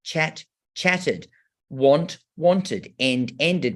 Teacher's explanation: after a t or a d, a t or a d, like chat, chatted, want, wanted, and ended, we get that ud sound. And I love telling the children that this sound, like ud, has the schwa in it.